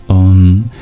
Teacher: closely you can hear that at the end of um that not only does the lips close to make the M sound but the tongue goes back